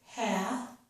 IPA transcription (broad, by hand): hæ